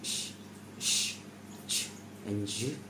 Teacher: are minus anterior because they are produced slightly further back in the mouth. This feature helps distinguish alveolar sounds from post-alveolar sounds.